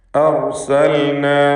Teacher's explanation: അർസൽന, ഈ പദത്തിലെ റായിനെ തഫ്ഖീം ചെയ്ത് തടിപ്പിച്ചുച്ചരിക്കണം. അർസൽന, റാ അല്ലാത്ത മറ്റക്ഷരങ്ങൾക്ക് തഫ്ഖീം വരാതെ ശ്രദ്ധിക്കണം.